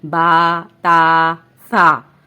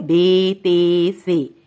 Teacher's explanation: اردو تلفظ یہ ہے بے، تے، سے، کیونکہ عربی حروف تہجی میں بڑی یہ کی آواز اے نہیں ہے بلکہ یا ہے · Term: عربی لب و لہجے